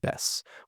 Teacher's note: you might hear people just say the word best, where you drop that T there